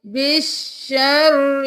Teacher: وَإِنْ عُدْتُمْ عُدْنَا، نمبر 11 میں دیکھ لیجئے، بِالشَّرِّ، بِالشَّرِّ نہیں کرنا، با زیر شین بش، یہ الف اور لام نہیں پڑھیں گے